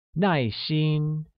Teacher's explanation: uses a falling tone on A and a high level tone on I